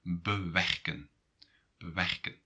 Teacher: So you're going to put stress on the second part, not on this prefix.